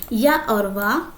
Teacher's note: बोलते समय या और वा को बोलते समय स्वरों से ज्यादा समय लगता है और बाकी व्यंजनों से कम समय लगता है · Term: अर्धस्वर